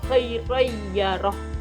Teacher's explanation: fathah tainnya melebur ke ya, khairayyaroh.